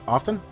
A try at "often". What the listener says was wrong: Well, no, the spelling is correct, but the pronunciation is you don't include the T.